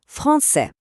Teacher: Кінцевий звук се тут ніби спить. Він німий.